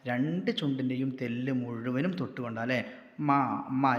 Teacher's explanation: 2 ചുണ്ടിൻ്റെയും തെല്ല് മുഴുവനും തൊട്ടുകൊണ്ട് ഉച്ചരിക്കുന്ന അക്ഷരം മീമാണ്